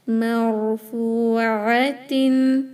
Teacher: Ain clear, not hamza.